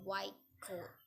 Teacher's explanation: t becomes k before k and g